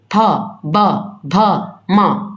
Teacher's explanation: प बोल रहे हो तो दोनों होठ आप एक बार प बोल कर देखो, दोनों होठ आपके क्या हो रहे हैं, सट रहे होंगे। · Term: ओष्ठ